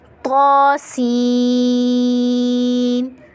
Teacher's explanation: طا کو ہم 1 الف کی مقدار کھینچ کر پڑھیں گے، کھڑا زبر ہے. اور سین پہ مد ہے، بڑی مد ہے، تو ہم نے 5 الف کی مقدار کھینچ کر پڑھنا ہے.